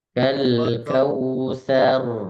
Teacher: Roknya karena berharokat fathah dan kemudian dalam posisi sukun dan diawali harokat fathah pula, maka roknya menjadi tebal. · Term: rok tafkhim